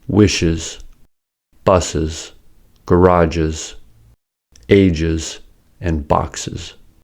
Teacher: Sibilants are sa, za, sha, ja, cha, and ja. When the final sound of a word is a sibilant, the plural is made by adding an es and making the sound is.